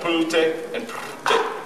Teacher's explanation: it's just an L, but it's syllabic.